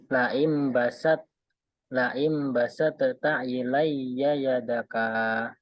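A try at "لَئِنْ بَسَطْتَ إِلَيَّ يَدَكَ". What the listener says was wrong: Nah, di situ toknya tidak qalqalah, tidak dibaca basat ta, tapi langsung basat ta.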